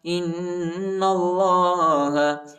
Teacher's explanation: حمزہ کو نون کے ساتھ ملائیں گے اور غنہ کریں گے، اور نون کو لام کے ساتھ ملائیں گے، الف نہیں پڑھا جاتا، الف پر حرکت نہیں.